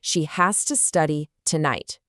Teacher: We connect has to so it sounds like hasta and we stress our main ideas.